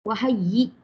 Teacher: Kalau kita keras sangat, wahai yi, dia akan jadi pelik sangat kalau dia. Dia hamzah mati pun tak boleh keras, lembut sahaja ya.